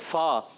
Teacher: اوپر کے دانتوں کے کنارے نچلے ہونٹ کے تر حصے سے جب لگتے ہیں تو ادا ہوتا ہے فا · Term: فا کا مخرج